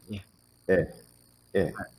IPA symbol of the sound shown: ə